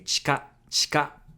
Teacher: the ‘i’ in ‘chi’ can be devocalized when you say it fast